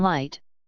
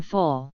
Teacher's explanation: the lateral approximant /l/ has two main allophones, the clear or plain, as in light, and the dark or velarized, as in full.